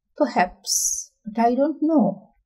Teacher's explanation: for uncertain doubt, it rises, fall and rise.